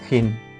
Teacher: Th, voiceless, dental, fricative, as in thin